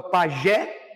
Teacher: tem acento É na última sílaba é oxítona